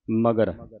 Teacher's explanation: ਮਗਰ ਪੋਲਾ ਉਚਾਰਨ ਕਰਨਾ ਅਧਕ ਤੋਂ ਰਹਿਤ ਪੜ੍ਨਾ